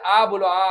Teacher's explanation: ऐसे स्वर जिनका उच्चारण में मुख द्वार को पूर्ण रूप से खोला जाता है। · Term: विवृत स्वर